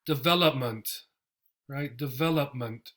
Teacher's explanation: the O turns into a schwa, and the actual E also gets the schwa sound, and the stress is in the vowel here, development.